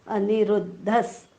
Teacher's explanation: विसर्गाच्या पुढे स आलेला आहे त्यामुळे विसर्गाचा आपण स उच्चार करणार आहोत.